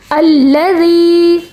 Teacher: یہاں یا مدہ بنا ہے. یا ساکن سے پہلے زیر یا مدہ کے طور پہ 1 سیکنڈ تک کھینچ کے پڑھا جائے گا